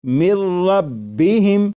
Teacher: نون ساکن کی آواز نہیں آئے گی، بلکہ میم کے بعد را کی آواز آئے گی، اور یہاں پر غنہ نہیں کریں گے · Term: ادغام